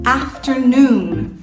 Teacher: esse ter não tem força então a sílaba tônica vem no a e depois vai lá pro no afternoon